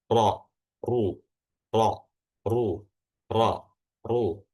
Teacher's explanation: ketika ro itu berharakat fathah atau domah, maka belakang lidahnya itu ditebalkan sehingga rongga mulutnya itu menyempit dan menghasilkan suara ro ru ru. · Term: ro yang dibaca tebal